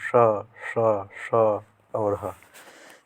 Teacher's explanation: ऊष्मी, यानी इनके बोलने में गर्म हवा निकलती है। जैसे बोलेंगे श श और ह, तो ये ऊष्मी होते हैं, ऊष्मा छोड़ते हैं बोलने में।